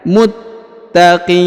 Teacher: huruf Qi dipanjangkan boleh dua boleh empat boleh enam ya karena di depan huruf q terdapat ya sukun atau ya mati · huruf ta ditahan dan ditekan